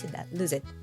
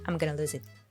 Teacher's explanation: The Z sound from lose, it just connects to it.